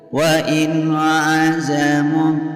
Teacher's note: Wa in hukum bacaan izharu halki karena ada nun sukun yang bertemu dengan huruf izhar yaitu ain. Membacanya jelas dan terang dan tidak boleh mendengung.